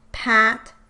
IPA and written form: pʰæt˭ (PAT)